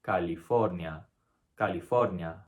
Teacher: notice how the first a and the last a are pronounced exactly the same